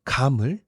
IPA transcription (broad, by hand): kɑmɯl